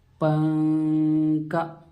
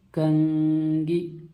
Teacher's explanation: पा और का के दरमियान जो नून है, जो नून की आवाज़ को नाक में छुपाते हैं आप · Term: इख्फा